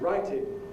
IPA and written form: ˈraɪtɪn (writing)